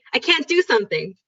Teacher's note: You don't hear a T. We just say it so fast.